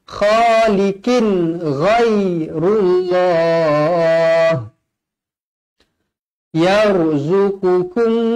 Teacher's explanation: Tanwin selari bertemu ghain, idhar halki juga, dibaca jelas dan terang.